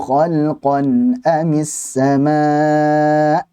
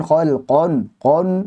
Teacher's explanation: Qa tebal, nya tipis